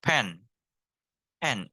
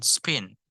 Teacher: The P is strong, and then spin. It is weak,